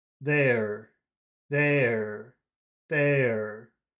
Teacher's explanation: standard UK accent, where they don't pronounce the R at the end of a word most of the time, then number one, the vowel sound becomes extremely important because number one is they ya, they ya.